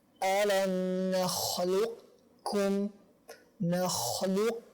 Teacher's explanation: membacanya dengan disisipkan sisa ketebalan yang ada di qaf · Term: idgham naqis